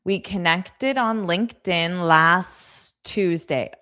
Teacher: Okay, so did you notice that last Tuesday, this T on last was totally silent. So it just sounded like last Tuesday.